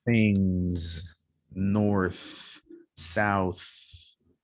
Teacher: no voice, just air coming out. Things, north, south, no vibration for the th sound.